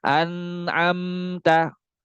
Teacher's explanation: rasakan suaranya itu memang benar-benar ngalir ke hidung kalau misalkan belum sampai ke hidung gunahnya belum sempurna gunahnya belum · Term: ghunah